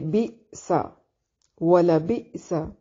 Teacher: سین کو باریک سیٹی سے